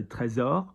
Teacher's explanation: And notice S is a Z, so trésor.